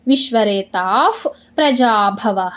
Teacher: ತ ಮುಂದೆ ವಿಸರ್ಗ ಇದೆ ವಿಸರ್ಗದ ಮುಂದೆ ಪ ಇದೆ ಅದಕ್ಕೆ ಅರ್ಧಫ